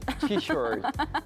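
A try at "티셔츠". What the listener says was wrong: Помягче, не ты, а ти.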